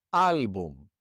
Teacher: This word ends in an M. And so the stress would normally be on the last syllable, but it's not. It's on the second to last syllable.